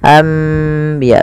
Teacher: Membalikkan suara nun menjadi suara mim. Awalnya anbiya Allah, karena bertemu dengan ba maka diganti dengan mim, maka dituliskan di atasnya dengan bentuk mim ini agar dibaca anbiya sambil ditahan 2 harokat. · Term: iklab